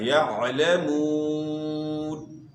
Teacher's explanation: عین کو اپنے مخرج سے یعنی گلے کے درمیان سے ادا کرنا ہے، یعلمون۔ وہ ساکن سے پہلے پیش ہے تو وہ مدہ ہے، آپ نے اس کو کھینچنا ہے، اور پھر آگے وقف کریں گے نون وقف کی وجہ سے ساکن ہو جائے گا، وَلَكِنْ لَا يَعْلَمُونَ۔